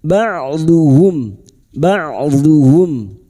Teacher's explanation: Huruf ain sukun wastul halqi atau tengah tenggorokan.